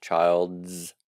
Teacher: that's actually a z sound even though it's spelled apostrophe s